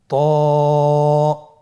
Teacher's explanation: হরফটি মোটা হারাফ। উচ্চারণের সময় অবশ্যই মোটা করতে হবে এবং উচ্চারণ করার সময় এক আলিফ টেনে পড়তে হবে।